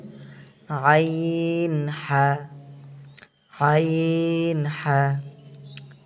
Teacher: দুই নাম্বার মাখরাজ হলকের মধ্যখান হইতে